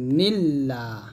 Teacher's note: নুন কে লামকে ধরবে, নুন লাম যে নীল লাম খাজবুল্লাহ হবে নীল্লা। এখানে পাতলা হবে কারণ আল্লাহ শব্দ লামে ডানে জের আসছে।